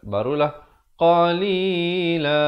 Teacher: hukumnya ikhfa yang isti'la, dibacakan dengan tebal, ya, kerana qaf merupakan huruf isti'la. Samanang, dua harakat, barulah qalila.